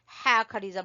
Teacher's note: हा को आपने गले के दरमियान से निकालना है।